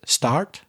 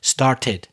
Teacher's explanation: And this problem often happens because start, it ends in that t sound, which is the same sound as started, more or less. So people forget to add the extra syllable between the present, start, and the past, started.